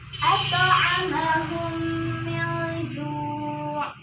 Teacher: Yakni apabila mim sukun atau mim mati bertemu dengan huruf mim. Cara membacanya langsung dimasukkan ke dalam huruf mim dan juga disertai dengung selama 2 harakat. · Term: idgham mimmi